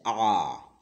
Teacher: विवृत स्वर को बोलने में मुंह सबसे अधिक खुलता है